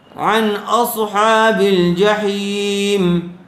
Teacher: اس لیے کہ نون ساکن کے بعد حروف حلقی کے چھ حرفوں میں سے حمزہ آیا ہوا ہے، اس لیے بلا غنہ کے اظہار کر کے جلد پڑھیں گے